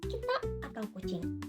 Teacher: bunyi K ini terbentuk saat bagian belakang lidah diangkat hingga menutup langit-langit lunak di bagian belakang mulut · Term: konsonan velar